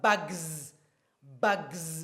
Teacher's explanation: Because g is voiced, the s becomes z. z. It's actually z sound. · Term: the Z sound